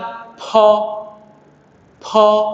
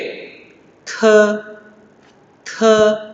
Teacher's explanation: bunyi aspiratif, yaitu bunyi yang mengeluarkan udara saat diucapkan